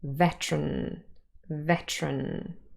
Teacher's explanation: if we say it fast the two schwas are dropped again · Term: syllabic consonants